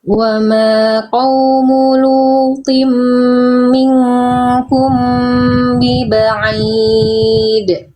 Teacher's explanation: ikhfa syafawinya kurang ditahan. Mim sukun ketemu banyak, kecepatan dikit ya, harusnya sama dengan kadar ikhfa hakiki.